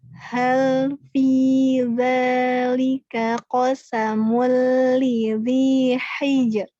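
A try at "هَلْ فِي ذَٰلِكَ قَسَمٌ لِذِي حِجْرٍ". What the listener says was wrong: Belum. Ra-nya sedikit lagi kurang. Hijr. Hal fi dzalika qasamul lidzi hijr. Ada dikit ya, tidak dihilangkan.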